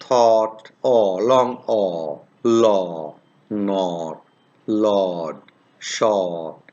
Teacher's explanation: it's a long vowel this is produced in the back part of the vocal tract